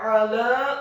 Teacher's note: huruf ainnya ditekankan keluar dari tenggorokan bagian tengah fathah satu harokat, huruf lamnya dibaca tipis tarqiq fathah 4 sampai 6 harokat.